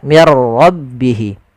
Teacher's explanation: Tapi takrirnya hanya satu saja tidak boleh berulang. Mirro enggak tapi langsung saja mirrabihi. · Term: sifat takrir